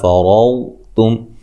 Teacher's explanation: موٹا، فا کو لمبا نہیں کرنا، ما الف مدہ ہے، فرضتم را کو موٹا، واد کو بھی موٹا ادا کرنا ہے ، تا کو باریک، میم ساکن کا اظہار ہے، غنہ نہیں